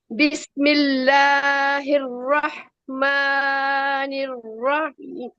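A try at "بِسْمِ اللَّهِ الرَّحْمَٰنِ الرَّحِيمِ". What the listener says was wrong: इसको three counts नहीं करना। मां को मां ही रखने है। टू counts.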